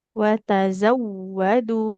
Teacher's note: Wawunya kan bertasydid ya. Jangan lupa untuk diberikan penekanan, dialirkan suaranya.